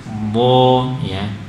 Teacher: Isti'la, suaranya terangkat, pangkal lidahnya terangkat. tebal. Bo ya.